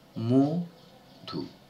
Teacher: আমরা কি দেখেছি না পূর্ববর্তী স্বরের প্রভাবে পরবর্তী স্বরের পরিবর্তন কিন্তু এখানে হচ্ছে পরবর্তী স্বরের প্রভাবে পূর্ববর্তী স্বরের পরিবর্তন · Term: পরাগত স্বরসঙ্গতি